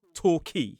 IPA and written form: tɔːˈkiː (Torquay)